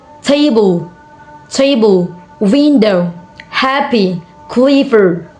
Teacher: Nouns and adjective are stressed on the first syllables.